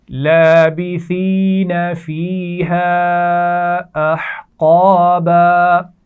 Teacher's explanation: احقابا، ہا کے مخرج کا خیال رکھیے، ہا کو واضح کیجیے اور قاف کو موٹا پڑھنا ہے